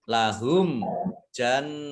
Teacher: nun tasdid dibaca gunnah atau mendengung ditahan 2 harokat